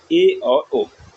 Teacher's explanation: अर्ध संवर्त में मुंह थोड़ा खुलता है, मतलब आधा थोड़ा सा मुंह खुलता है।